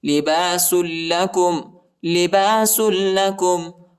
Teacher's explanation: لام پر شد آیا ہے اور لام کو شدت کے ساتھ سختی کے ساتھ پڑھیں گے، ٹھیک ہے؟ لباس لكم وأنتم لباس لهن علم الله میم کو لام کے ساتھ ملائیں گے اور اللہ کے نام کو موٹا پڑھیں گے، پر پڑھیں گے۔